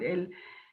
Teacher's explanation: the air passes through the sides of the tongue